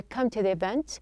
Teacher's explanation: it's not a tu with a high or a raised sound. It's a t. It gives you a little bit of a flapping sound. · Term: flapped sound